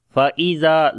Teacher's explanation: zal we read in soft sound and also we long due to alif madda.